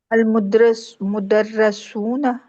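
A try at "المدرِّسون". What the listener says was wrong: दर्रा तो नहीं है, दर्री है, तशदीद की नीचे जेर है ना। अल मुदर्रिसूना,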